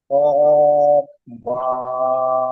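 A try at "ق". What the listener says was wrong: কব নয়, কাফ কাফ।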